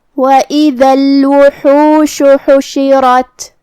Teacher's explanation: ہا کی ادائیگی حلق کے درمیان والے حصے سے ہے تو ہم ہا کو وہیں سے پڑھیں گے.